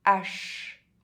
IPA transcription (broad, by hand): aʃ